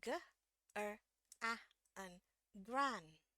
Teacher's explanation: ya naik turun turun naik turun turun grandparents grandparents oke grandparents yang versi British dia tidak sama pengucapannya dengan American ketika a ketemu n jadi dia tetap dibunyiin a